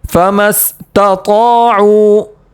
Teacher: طا کو پڑھیں گے موٹا، کیونکہ طا حروف مستعلیہ میں سے، اس کو تا نہیں پڑھیں گے، اس کو پڑھیں گے طا۔